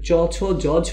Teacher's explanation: চ ছ জ ঝ এগুলো হচ্ছে তালু থেকে উচ্চারিত হয়, এই জন্য এটাকে বলা হয় তালব্য বর্ণ